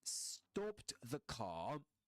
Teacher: in Southern Standard British English, the R is not usually pronounced at the end of a word, like car